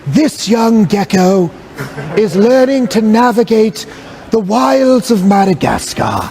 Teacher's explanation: so it's a very breathy onset · he talks with a very aspirant onset, right? It's very breathy.